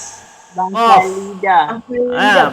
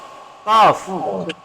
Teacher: Pangkal lidah atau pangkal lisan naik ke atas jadi qaf.